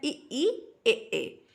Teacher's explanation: जीभ के आगे के भाग का जब उपयोग करते हैं तो उसे अग्र स्वर कहते हैं